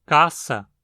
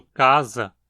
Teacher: caça com s surdo se tornando casa com s sonoro como um z